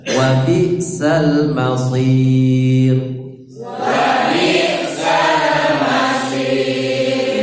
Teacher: Ya, hati-hati, bisa pakai sin, masir pakai sad ya. Sad sifatnya tebal, lidahnya ditekan ke atas.